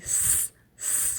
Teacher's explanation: یہ اس کا articulation point مخرج ہو گیا اور اس کی آواز اوپر اور نیچے کے سامنے والے دانتوں کے درمیان سے نکلتی ہے، ٹھیک ہے. اور اس کی آواز تیز ہو کر آئے گی، سیٹی کسی آواز